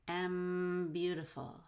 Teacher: you want to link the m to beautiful m beautiful hold that m use your nose